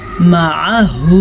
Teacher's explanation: عین کی مخرج کو اگر آپ واضح نہیں کریں گے تو آپ اس کو الف یا حمزہ بنا دیں گے